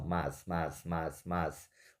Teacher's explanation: Mas veja, a palavra mais é como se a gente lê isso assim, ó, mas. Ou seja, o som do A e do I, eles formam um som só, eles ficam juntos.